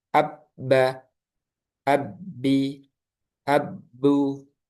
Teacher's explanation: Nah, jadi huruf ba ini keluarnya dari asyafatain, dari kedua bibir. Nah, seperti itu.